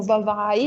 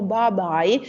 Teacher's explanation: un passaggio della fricativa sonora in V in bilabiale sonora B , e questo è un passaggio che non è ancora completato